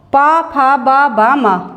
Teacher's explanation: दोनों होठ जब हमारे मिलते हैं, जब हमारी ध्वनि निकलती है, वे आते हैं हमारे पवर्ग के अंतर्गत। ओष्ठ व्यंजन कहते हैं इनको।